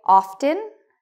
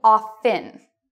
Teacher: Some people say, often -- that's good. Other people say offen with a silent T.